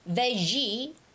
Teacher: G has that j sound. It's the voiced sound of sh sound.